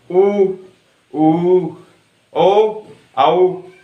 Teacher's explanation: वृत्ताकार जिनका उच्चारण करते समय हमारे होठ गोल हो जाते हैं,